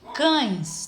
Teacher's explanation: o A, ele sai com mais força e o E com menos força. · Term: semivogais